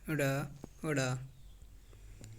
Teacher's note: जीभ ऊपर उठकर तुरंत झटके से नीचे गिरती है, उत्क्षिप्त ड़, ड़ा, यह द्विगुण व्यंजन कहलाते हैं या उत्क्षिप्त।